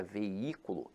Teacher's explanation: a palavra veículo, apesar de ter hiato, veja que a sílaba tônica se encontra na antepenúltima sílaba. Então, aqui, ela é acentuada pela regra da proparoxítona.